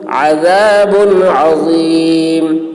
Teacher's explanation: یہاں پر اظہار ہوگا، یعنی تنوین کو ظاہر کر کے جلد پڑھنا ہے